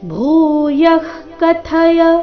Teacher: ಭೂ ಮಹಾಪ್ರಾಣ ದೀರ್ಘ ಬರಬೇಕು. ಕಥಯ ಇಲ್ಲಿ ಥ ಮಹಾಪ್ರಾಣ ರಸ್ವ.